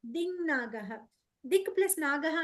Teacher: సో anyway దిక్ ప్లస్ నాగః దింగ్ నాగః దిక్ ప్లస్ నాగః అన్నప్పుడు క అనే వర్గీయ వ్యంజనానికి న అనే అనునాసిక పరమైంది ఇలా పరమఅవ్వడం వల్ల క బదులు ఆ కవర్గీయ అనునాసిక వచ్చేస్తుంది